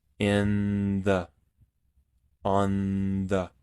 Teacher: Ahora que entre comillas tenemos una palabra que termina con sonido de N y otra que inicia con sonido de TH, lo que podemos hacer es trasladar el sonido de la N a los dientes. Es decir, al sonido de la TH le vamos a agregar la nasalidad del sonido de la N.